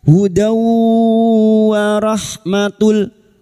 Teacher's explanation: Sekarang di sini kita wasol, kita uraikan pada kalimat hudaw, fathah tanwin bertemu wawu idgham bi guna, masuk pada huruf wawu dan mendengung selama 3 harokat